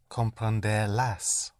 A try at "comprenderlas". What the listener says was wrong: yes, but don't hit the ending.